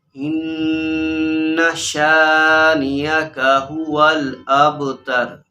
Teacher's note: اس انا کو لمبا نہیں کرنا، غنہ کرنا ہے لیکن لمبا نہیں کرنا